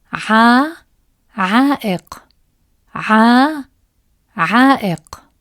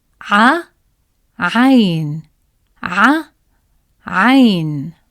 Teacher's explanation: Feel how the long ع sound in عائق is extended compared to the short vowel ع in عين.